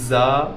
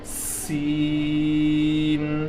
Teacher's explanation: زا کو شارٹ پڑھیں گے لیکن آواز سیٹی جیسی ہوگی، اور سین کو لمبی آواز سے پڑھیں گے، آواز سیٹی جیسی ہوگی